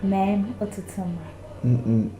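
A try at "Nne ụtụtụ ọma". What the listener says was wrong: Not Nam. Say Nim.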